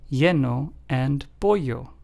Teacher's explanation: For the first one, we have the two L's at the beginning, and then for the second word, we have the L's near the end, lleno and pollo. Notice how in both of those, the two L's sound like a Y in English.